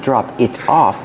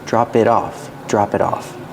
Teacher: We see how the T in it changes to a fast D. Not drop it off, but drop it off.